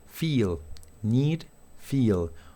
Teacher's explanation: esta I larga, ¿sí? Que al pronunciarlo nuestros labios se hacen un poquitito hacia atrás, como para una sonrisa